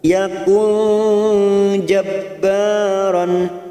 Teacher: nun sukun bertemu jim ikhfa hakiki kita samarkan 3 harokat